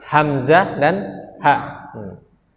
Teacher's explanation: yang pertama dari pangkal tenggorokan yaitu huruf hamzah dan H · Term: huruf tenggorokan